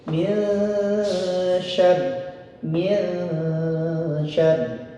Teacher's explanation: maka nun sukun tersebut lidah kita tidak sempurna menyentuh langit-langit ujung lidahnya. Namun siap masuk ke huruf selanjutnya yaitu huruf shin. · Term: ikhfa hakiki